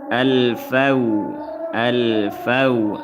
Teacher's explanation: alif lam berjumpa dengan fa, alif lam qamariyah, hukumnya izhar qamari, dibaca jelas.